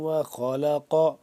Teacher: خا کو موٹا قاف بھی موٹا کر کے پڑھیں گے